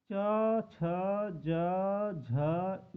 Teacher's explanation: है च वर्ग वाले व्यंजक को तालू बोला जाता है तालू वर्ग में रखा गया है या तालू से हमारे तालू से आवाज आती है जीव के अंदर से आवाज आती है निचले हिस्से से तो